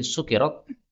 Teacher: Sukkirat, kafnya boleh ditakhfif, dihilangkan tasydidnya, menjadi sukirat.